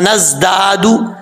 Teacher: जा जो है वो सीटी के साथ पढ़ा जाएगा, इसको बगैर सीटी के साथ नहीं पढ़ना।